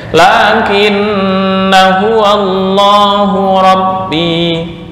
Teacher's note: ketika waqaf dibaca panjang satu alif, ketika wasal dibaca pendek